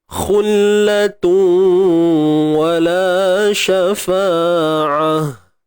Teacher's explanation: Tanwin bertemu dengan waw, idgham bi gunnah. Masukkan bunyi tanwin ke dalam waw.